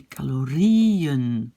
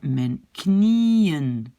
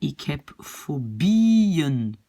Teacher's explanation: l'accent est sur le I